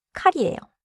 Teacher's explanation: It means knife, and the first sound has a clear puff. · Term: puffed 키읔 sound